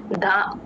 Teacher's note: ఆ చివర్లో ధ కి మహాప్రాణ ఉంది అదే D H A ధ T H A ధ కాదమ్మా గమనించుకోండి